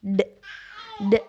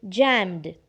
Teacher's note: so it is voiced right and just because it is voed the Ed here will be sounded as d d so it will be jammed